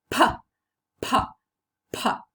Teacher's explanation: In this case, the two lips are active articulators and they come into contact. So, in the articulation of this consonant sound, we can easily perceive the contact between our lips.